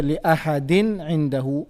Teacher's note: we pronounce the tanween clearly. We did not apply any gunna. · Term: idhar